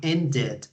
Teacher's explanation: end ends in the D sound, so we have to add an extra syllable, which is the ED sound